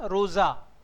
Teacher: After S, if any vowel is there, S becomes Z.